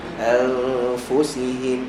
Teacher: Dengung kita sebut sebelum ni ada dengung tebal, ada dengung nipis, bergantung pada huruf yang datang selepas huruf berdengung. Okey, huruf berdengung kat sini adalah huruf nun, selepas dia fa nipis, maka dengung kita nipis.